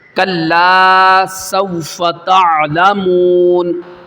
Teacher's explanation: سین پہ سٹی نکالنی ہے، اور تا اور عین، یہاں پہ عین ہے، واضح کرنا ہے تعلمون۔